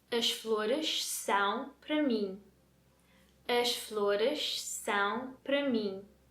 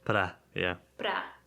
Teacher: para is one of those words in that sentence that isn't stressed, so it's being reduced to the sound Pra.